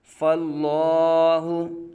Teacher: فاللہ، اس میں جلالت اللہ عز و جل کے لام سے پہلے فا کے اوپر زبر ہے تو اس لیے لام کو پر پڑھا جائے گا